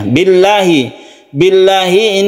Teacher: Billahi ini adalah yang dibaca tarqiq atau tipis disebabkan karena sebelumnya ada kasrah bibi ini menyebabkan dia itu tarqiq atau tipis Billahi bukan Billahi